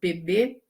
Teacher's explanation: quando você fala as consoantes oclusivas, por exemplo, PB, elas saem depois como se fosse uma explosão